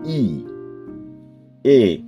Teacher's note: দেখুন আমাদের ঠোট চ্যাপটা হয়ে যাচ্ছে বা প্রসারিত হয়ে যাচ্ছে। ডানে এবং বামে প্রসারিত হচ্ছে ই